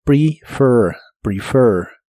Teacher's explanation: La H se pronuncia como una J suave, have, have, y practicarás con el verbo prefer, que significa preferir. La primera e de esta palabra se pronuncia como i corta.